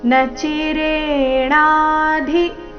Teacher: ನಚಿರೇಣಾದಿ ಇಲ್ಲಿ ಧಿ ಮಹಾಪ್ರಾಣ ರಸ್ವ